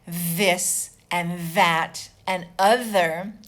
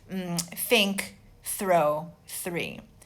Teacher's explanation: If you put your hands here, you have a buzzed TH, means you use your vocal cords